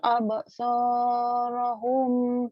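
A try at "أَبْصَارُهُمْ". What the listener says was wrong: Bukan rohum, ruhum. Absaruhum.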